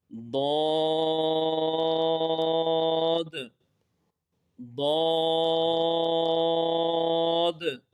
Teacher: زبان کی کروٹ اور اوپر کے داڑوں کی جڑ سے ادا ہوتا ہے